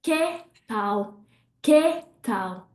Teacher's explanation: Again, you can see my mouth open. Que, that E is an open E. But in Portuguese, we close it down.